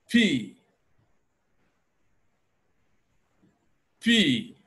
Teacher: that is the mouth behind the closed lips and when I suddenly open my lips then the sound will escape with an explosion